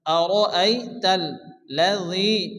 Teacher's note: তাসদীদ আসছে, এর জন্য লামকে দুবার উচ্চারণ করে পড়তে হবে। প্রথমত ডান দিকে অক্ষরের সঙ্গে মিলিয়ে পড়তে হবে, এরপর শুধুমাত্র লাম উচ্চারণ হবে।